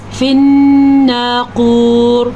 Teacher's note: نون کا غنہ ضرور ادا کرنا ہے اور موٹے قاف کو ضرور ادا کرنا ہے